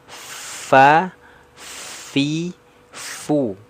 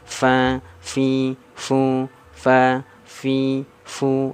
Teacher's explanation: Fa-nya dibuka mulutnya, yang fi-nya dikasrohkan turun rahangnya, vokalnya i, yang fu-nya dhammah monyongkan sempurna.